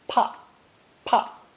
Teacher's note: Pronounced fourth tone, pa, pa.